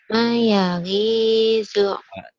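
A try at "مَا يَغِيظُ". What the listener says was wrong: Maknya panjang. Ma yagizu.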